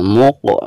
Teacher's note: Qolqolah Sugro dan cara membacanya itu harus ada pantulannya